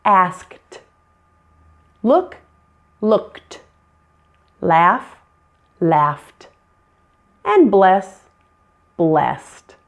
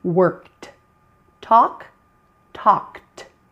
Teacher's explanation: Several endings are voiceless endings. So you'll sometimes hear the ed pronounced as t with that e silent again.